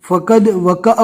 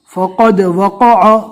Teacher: منہ بھر کر پڑھنا ہے، یعنی منہ کے اندر آواز پھیلے گا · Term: قوف